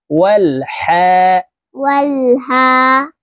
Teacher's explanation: লাম জবর ওয়াল, হা খারা জবর হা, হা কারা জবর হা, হা হলকের মধ্যখান থেকে উচ্চারণ করতে হবে কারণ হার মখরাজ হলকের মধ্যখান থেকে হবে